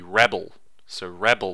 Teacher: the stress is on the first syllable, and then it goes down.